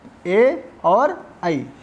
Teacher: ए दौतो कंठ तालु, यहाँ पर 2 स्थानों को मिला करके जो वर्ण बोले जाते हैं उनका संकेत किया जाता है कि कंठ और तालु के माध्यम से जिन वर्णों का उच्चारण किया जाता है वे हैं ए और ऐ। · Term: कंठ तालव्य वर्ण